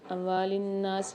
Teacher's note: نون پر مشدد ہے، غنہ کر کے پڑھیں گے اور کھینچ کے بھی پڑھیں گے الف مقدار